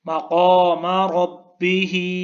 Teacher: مقامہ میں جو اس کا سیکنڈ میم ہے، دوسرا میم ہے، اس کو کھینچنا نہیں ہے، مقامہ نہیں پڑھنا، مقام ربِّهِ۔